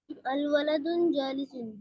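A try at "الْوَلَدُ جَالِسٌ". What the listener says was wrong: नहीं होगा, तनवीन नहीं, तनवीन और अलिफ नाम साथ नहीं आएंगे। अलवलदु, अलवलदुन नहीं पढ़ेंगे।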